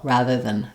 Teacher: Most of the time, though, you're going to really not hear this ah, and it's going to sound a lot more like then, rather than using an ah, I'm using more of an eh, or even just no vowel, rather than I'm going very quickly from the th to the n sound.